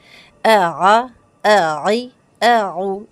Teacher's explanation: عین کی آواز حلق کے درمیانی حصے سے